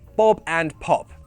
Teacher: with every P sound, the paper moves because of that puff of air from your mouth.